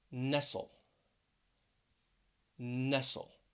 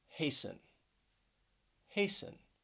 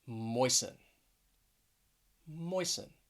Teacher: all of them have two syllables and the stress is on the first syllable